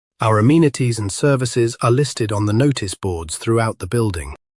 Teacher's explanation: Notice boards is a compound noun, meaning boards for notices, so the stress falls on notice.